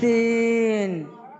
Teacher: এইটার ক্ষেত্রে সিনের ক্ষেত্রে দাঁতের সাথে দাঁত লাগাই, উপরের দাঁত নিচের দাঁতের সাথে লাগাইয়া সিন